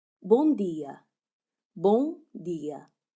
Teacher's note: The O in bom is nasal. Think about the ng sound in English.